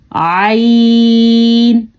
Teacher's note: हलक के दरमियान वाले हिस्से से निकलता है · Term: वस्ते हलक